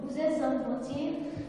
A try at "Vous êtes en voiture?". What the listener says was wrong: Bon, de toute évidence, il s'agit de l'erreur classique des Tunisiens qui confondent le U avec le I. Diagnostic en erreur, hein, excès d'éclaircissement. Donc nous allons utiliser tous les procédés d'assombrissement du timbre.